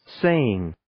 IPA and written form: 'seɪɪŋ (Saying)